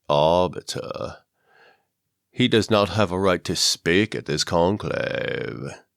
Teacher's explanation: i put some vocal fry in it